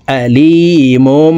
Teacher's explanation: ছোট্ট মিম দ্বারা পরিবর্তন করিয়া গুন্নার সহিত পড়তে হবে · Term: ইকলাব